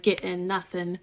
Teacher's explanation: I often cut the G off of ing endings, so like getting nothing.